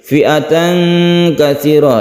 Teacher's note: ini ikhfa kita dengungkan, tanwin bertemu dengan kaf